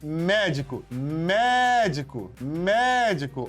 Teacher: Então, não é a última que é forte, não é a penúltima, é a antepenúltima que é forte. O Mé. Então, eu chamo de proparoxítona. · O Mé é forte.